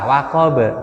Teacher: Kolkola sugro, kecil. Pantulannya sedikit karena tidak jatuh setelah alif dan tasdid.